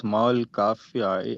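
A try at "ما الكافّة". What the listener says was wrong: Ma is not kafia, is ma al kafa. ma al kafatu or kafati. Ma al kafati. If I'm not mistaken, the fa has a shadda on it.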